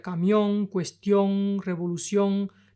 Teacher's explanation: la punta de la lengua no toca el cielo de la boca, se nasalizan.